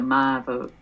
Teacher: that was kind of a Texan I diphthong that I just did there